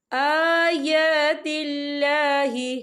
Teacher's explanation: آیا کھڑی حرکات ہے، تو ہم اسے 2 یا 3 حرکت کے برابر کھینچ کے پڑھیں گے